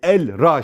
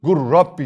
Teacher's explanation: iki şed de ver erra şeklinde okuyoruz Normalde elra şeklinde okurduk lamı ortadan kaldırdık şed de verdik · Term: idgam mütekaribeyn